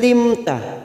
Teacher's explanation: mim sukun bertemu ta namanya Idhar syafawi kita baca jelas tanpa mendengung